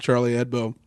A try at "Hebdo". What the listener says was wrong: Oh my God, you guys, it's not Edbo, it's Hebdo. I'm not French, but it's Hebdo. and we keep saying Headbo, and it's just like...